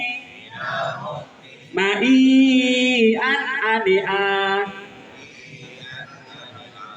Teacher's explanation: Hamzah itu teman-teman kalau sudah bersukun itu dia napasnya terhenti.